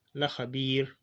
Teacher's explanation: Le R ici ne doit pas être alourdi, parce que c'est précédé d'un kasra qu'on tire.